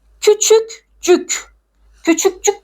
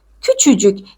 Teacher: cık cik cuk cük c ve L eki aldığı zaman k ünsüzü düşüyor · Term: Ünsüz düşmesi